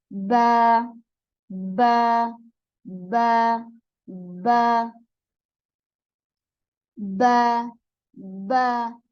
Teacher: दोनों होंठ जो हैं आपस में मिलते हैं, उससे बा अदा होता है